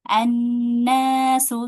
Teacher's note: alif lam syamsiyah yang enggak dibaca hanya huruf lamnya aja